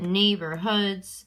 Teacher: And when I say it, neighborhoods, it seems like there's 2 stresses in there. Okay, so that second syllable in the 3-syllable word is unstressed, and the ones on either side are going to be stressed